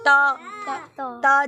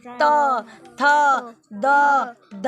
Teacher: तो देखो त जीभ किसको छू रही है, दांतों को